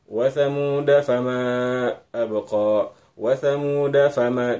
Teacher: Wa thamuda fama abqa, tidak dibaca wa thamuda fama abqa, dipanjangkan dalnya itu tidak begitu, tapi langsung begitu dal satu ketukan, da langsung masuk ke bunyi huruf fa, huruf berikutnya